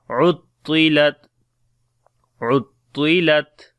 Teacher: This ta we read in heavy sound, and on the ta we make shiddat and hams quality.